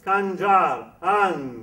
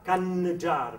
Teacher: Parce que si vous faites n comme une consonne, ce n'est pas une consonne, c'est une nasalisation, c'est-à-dire c'est une résonance qui s'ajoute à la voyelle et qui vous permet à ce moment-là de trouver ce lieu oronasal qui vous permet de chanter magnifiquement bien.